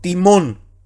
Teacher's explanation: Y entonamos y acentuamos la sílaba mon, ¿ya? Que sería la última, donde va el acento circunflejo, precisamente porque el acento circunflejo va ahí.